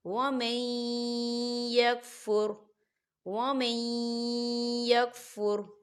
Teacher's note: نون ساکن ہے، نون ساکن کے بعد یا رہا ہے تو یہاں یا جو ہے حروف یرملون میں سے ہے تو یہاں پر ادغام ہوگا